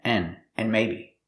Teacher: And continues, and maybe you should buy some pepper spray, just in case. We hear the word and, not pronounced and, but pronounced n